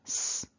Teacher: the tongue is up there behind the top teeth and we're allowing air to hiss out of the mouth. So when I say ps, this is quite a windy, airy sort of combination.